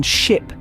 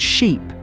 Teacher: Ship has a shorter I sound, while sheep has a longer E sound.